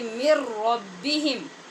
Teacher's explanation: آپ نے دیکھا نون پڑھتے ہوئے ہماری آواز سے نون کا کوئی وجود ہی محسوس نہیں ہو رہا. مر ربہم، اس میں غنہ نہیں ہوا، مکمل طور پہ نون را کے اندر مدغم ہو گئی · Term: بے غنہ